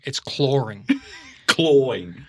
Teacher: There's an R in there. You just can't see it.